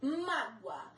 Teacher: A sílaba forte é o má, acento no má. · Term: paroxítona